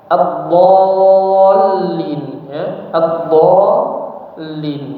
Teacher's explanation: Maka huruf dhad dipanjangkan dulu enam harakat